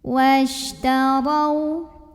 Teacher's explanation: Huruf shin punya sifat namanya tafashi. Tafashi itu artinya menyebarkan angin di dalam mulut. Washtarau. Huruf ra dibunyikan secara tafkhim karena ra-nya berbaris fathah.